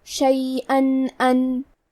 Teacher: ارادہ، کلمت شیئن کے آخری میں حمزہ پہ تنوین زبر ہے، پھر حرف الالف آتا ہے کلمت ان، الف حروف الاظہار میں سے ہے تو ہم یہاں تنوین ظاہر کریں گے اور بغیر غنہ سے یہ حکم کو ادا کریں گے۔